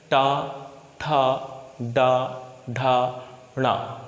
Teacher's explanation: हमारी जीभ थोड़ी तालु से थोड़ा पीछे स्पर्श करेगी, यानी ज़्यादा मुड़ेगी, और मुड़ने के बाद बहुत तेज़ी के साथ नीचे स्पर्श करेगी, यानी नीचे आएगी, और उसे ही हम कहेंगे मूर्धा। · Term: मूर्धा वर्ग